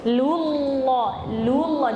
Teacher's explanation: Nah, lamnya tipis, lu. Lamnya yang lu tipis tapi lam yang di Allah tebal.